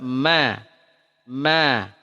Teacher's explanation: Ma dari dua bibir dipertemukan tidak ditekan · dia tidak bernafas ya dia bainiyah berjalan sedikit dia tidak asyiddah tidak ditekan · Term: huruf mim